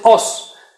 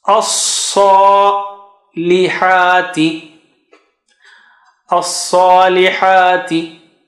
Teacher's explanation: So you go high. As, don't say os. Say as.